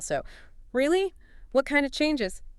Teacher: I need that rise-fall pattern for the emotional reaction, followed immediately by a WH question to get specifics. And remember, WH questions usually fall.